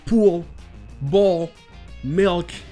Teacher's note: Et si je l'ai bien fait, avec un peu de chance, vous l'avez entendu quand je l'ai dit. Ce n'est pas le son du L complet, il n'y a pas ce claquement que vous pouvez avoir dans le. On le prononce à peine. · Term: dark L